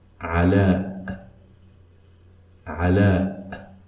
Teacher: Ala has Hamza at the end of it, which should be pronounced as a glottal stop.